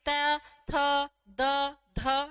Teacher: तो हमारी जो जीवा है वो दांतों के नीचे स्पर्श करेगी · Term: त वर्ग